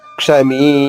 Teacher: క్ష పలికిన సమయం కన్నా మీ పలికే సమయం రెట్టింపు ఉండాలి. క్షమీ. అలా ఎక్కడ దీర్ఘాక్షరం వచ్చినా సరే అదే నియమం పాటిస్తూ హ్రస్వాక్షరానికి రెట్టింపు సమయం దీర్ఘాక్షరం ఉచ్చారణ ఉండాలి. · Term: దీర్ఘాక్షరము